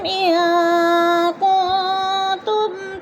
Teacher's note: ان کنتم، ان پہ نون ساکن کے بعد کاف آ گیا ہے تو ادھر اکفا ہو رہا ہے، غنہ کریں گے، ناک میں آواز کو چھپا کر پڑھیں گے